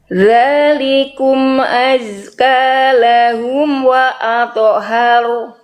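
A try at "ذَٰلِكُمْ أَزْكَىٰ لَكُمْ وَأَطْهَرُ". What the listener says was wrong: Oke, bukan lahum Bunda, tapi lakum. Oke, bunyi tonya masih belum jelas Bunda. Wa adhhar.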